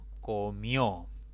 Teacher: esta palabra tiene dos sílabas la mayor intensidad cae en la última sílaba contando siempre de izquierda a derecha termina en vocal por lo